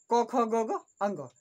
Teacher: अ, आ, क वर्ग, ह और विसर्ग का उच्चारण स्थान कंठ होता है